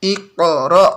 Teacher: Iqra, pantulan qaf ini, kol-kolannya qaf sampai ke ro. Kemudian hamzahnya punya sifat syiddah, kuat. Jadi tidak ada sisa-sisa dari hamzah. Iqra, gak ada sisa, tapi kuat pantulannya.